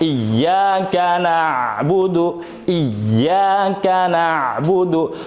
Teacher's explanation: Jadi kalau ada tasdid ini maknanya itu 2 huruf awalnya. Iya pertama mati, iya kedua hidup. Sehingga iya yang pertama masuk ke dalam iya yang kedua, jadinya idgham. Maknanya tuh idgham juga.